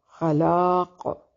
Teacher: قاف کو وقف کی صورت میں موٹا پڑھیں گے اور وصل کی صورت میں بھی اس کو موٹا پڑھیں گے اور وقف کی صورت میں یہاں پر قلقلہ ہوگا.